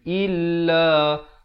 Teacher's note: Hamzah baris bawah bunyi i, bukan bunyi e.